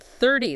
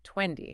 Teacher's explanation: It often becomes what we call a flap T. It sounds much more like a D.